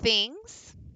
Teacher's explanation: sending your N sound back to the back of your throat